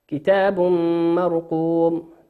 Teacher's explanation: تنوين أتى بعده حرف الميم والميم من حروف الإدغام بغنة يغن بمقدار حركتين